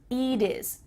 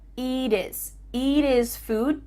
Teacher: So let's change that T to a D and make sure that you cut off the H.